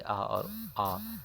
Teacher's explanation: विवृत स्वर के उच्चारण में मुख द्वारा पूरा खुल जाता है, यानी मुख को पूरा खोल के बोलना होता है